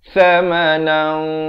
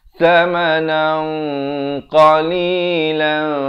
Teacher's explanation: dibaca ikhfa 2 harakat dengan tebal kerana qaf merupakan huruf isti'la